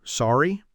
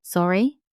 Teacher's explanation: Sorry, with rising intonation. Appropriate in almost every setting.